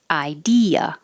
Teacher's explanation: the e and the a are next to each other and they go in separate syllables so you hear each of them